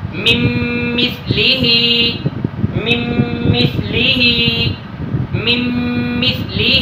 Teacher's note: غنہ کے ساتھ پڑھیں گے من مثلہ. دیکھیں کہ نون ساکن کے بعد میم آیا ہے، اس وجہ سے ادھر ادغام مع الغنہ کر کے پڑھیں گے